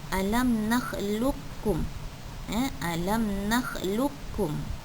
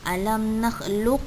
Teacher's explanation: Tak perlu bunyikan qaf tersebut. Terus saja bunyikan kaf. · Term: idgham mutaqaribain